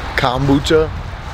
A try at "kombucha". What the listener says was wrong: It's not an A. That's how we say it. Kombucha.